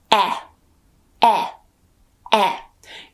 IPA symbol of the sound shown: e